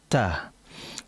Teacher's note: Ketika kita mengucapkan huruf ta, kita akan mendengar dan merasakan adanya udara yang mengalir yang disebut dengan sifat hams.